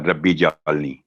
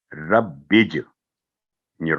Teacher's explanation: یہ را با اور جیم تینوں حروف مل کے ایک ساؤنڈ بن رہا ہے